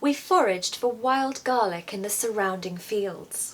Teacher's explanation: In this text, I'm stressing wild garlic because it's the star of the story